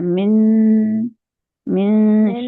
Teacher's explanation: नून की आवाज को हमने छुपाना है और जबान को शीन के मखरज पे लेके जाना है। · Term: इख्फा